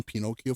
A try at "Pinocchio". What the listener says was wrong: I don't think there's an accent on the eye